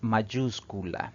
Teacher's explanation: mayúscula si separamos en sílabas esta palabra tiene cuatro sílabas y la mayor fuerza de voz recae en la antepenúltima sílaba contando de derecha izquierda por lo tanto esa es drujula